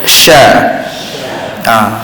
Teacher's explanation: satu sifat yang penting bagi huruf syin adalah semburan dia ada hembusan hembusan dia Hamas juga tapi tekanan dia agak sederhana berbandingah tadi